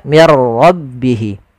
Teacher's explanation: kemudian ditandai dengan ada tanda seperti ini ini berbentuk ya kecil panjangnya untuk Mad Silah qasirah yaitu sepanjang dua harakat · Ra itu punya sifat namanya sifat takrir, tapi takrirnya hanya satu saja, tidak boleh berulang.